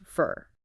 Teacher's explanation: We rarely say the full for in conversation. It becomes fur.